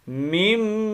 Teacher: نون ساکن کے بعد با آ گیا تو اس کو نون ساکن کو ہم نے میم سے بدل دیا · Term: اقلاب